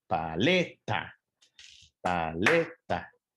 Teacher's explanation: su sílaba tónica que se encuentra ubicada en la penúltima sílaba · Paleta es una palabra trisilábica, son de 3 sílabas, pero su sílaba tónica se encuentra ubicada en la penúltima sílaba, que es le. Está en rojo y los picos suenan más fuerte.